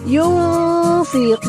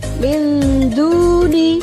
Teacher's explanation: cara membaca bacaan ikhfa hakiki ini adalah nun sukun atau tanwinnya dibaca samar-samar.